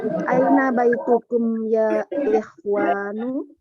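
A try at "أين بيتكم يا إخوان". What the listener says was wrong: Ayo ahsanti, sahih ya.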